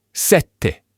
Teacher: The E is much quicker, more abrupt. Sette. It's this tiny little change in the vowel that makes all the difference in the world.